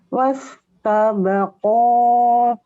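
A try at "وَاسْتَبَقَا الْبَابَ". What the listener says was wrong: Jangan panjang. Jadi gini, wastabaqal bab.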